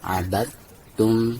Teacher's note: Jadi dari ba langsung diidghamkan ke ta. Jadi dalnya seolah-olah diabaikan ya. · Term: idgham mutajanisain